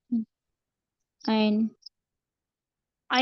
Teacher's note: عین کو حلق کی درمیانی حصے سے ادا کریں گے